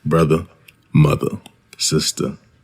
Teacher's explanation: R-less pronunciation. AAVE tends to be R-less at the end of words, similar to the accents of England and some Northeastern American accents.